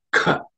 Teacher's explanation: This is the second letter in the ka varga, so it has to be aspirated with some extra air.